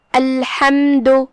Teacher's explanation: ہا کی ادائیگی حلق کے درمیان والے حصے سے ہے. ہم ہا کو وہیں سے پڑھیں گے اور اسے ظاہر کریں گے. · آخری میں دال پہ پیش ہے. دھیان رہے ہم دال کو صرف پیش سے ادا کرتے ہیں، اپنی آواز لمبی نہیں کریں گے تاکہ مد واو نہ ظاہر ہو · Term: حرف الحا